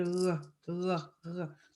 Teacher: en français, c'est comme on dit, franchement, c'est dans la gorge. En créole, c'est juste que c'est plus profond.